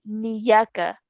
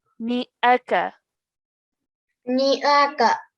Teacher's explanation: The noon needs to be pronounced separately, the hamza separately. · a lot of times students pronounce the noon and the hamza together, and it then sounds like a ya. So sometimes I've heard students say niyaka.